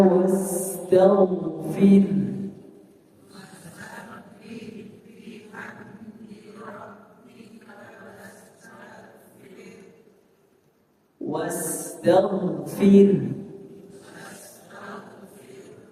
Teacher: rnya tipis kemudian ada ha sukun